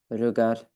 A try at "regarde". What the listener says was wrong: Ok, regarde. Toi, tu m'as dit regarde. coup, le D ici, on le prononce pas, il n'y a pas le E derrière.